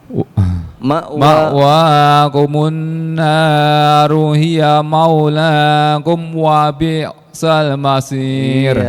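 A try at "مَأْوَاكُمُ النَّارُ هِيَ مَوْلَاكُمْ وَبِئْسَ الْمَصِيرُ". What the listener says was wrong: Iya, tuh jangan kolkolah mimnya.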